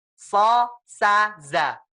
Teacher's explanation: So dengan sin sama. Ya, tapi so pangkal lidahnya naik.